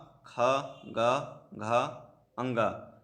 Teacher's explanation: कवर्ग की यदि हम बात करते हैं तो ये कंठ से बोला जाए, उच्चारण स्थान इसका कंठ है और इसका वर्ण नाम जो है वो कंठ है।